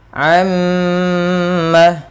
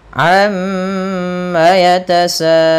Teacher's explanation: Nah, di sini salah satunya yaitu gunnah ketika adanya adanya mim tasydid atau nun tasydid. Cara membacanya yaitu menahan suara mimnya sepanjang 2 harokat.